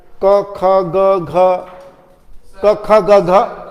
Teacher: Ka kha ga gha are touching the soft palate